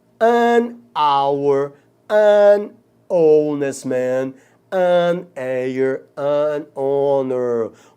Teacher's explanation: o H aí é mudo, gente, ele não tem o som do R. O H aqui é mudo.